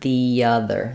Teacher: Most of the time this word sounds like the with a schwa, but here it's going to have the. And then since other starts with a vowel, I'm going to link. I'm going from vowel to vowel. So I'm going to have a little bit of a y sound sneaking in there. · because other starts with a vowel sound, I'm going to have the true E here in the. Most of the time this word sounds like the with a schwa, but here it's going to have the.